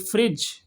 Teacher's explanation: फ्रिज में डी का जो साउंड है वो हमने ओमिट कर दिया